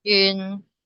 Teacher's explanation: jadi ujung lidahnya itu habis melafalkan itu nempel di langit-langitnya